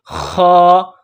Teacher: خا کو موٹا کرنا ہے، جس طرح بلغم نکالتے ہیں گلے سے